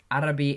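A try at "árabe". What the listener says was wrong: in Spanish, E are always E, not with the I sound. like in English. Air. So arabe. As opposed to arabi. Arabe.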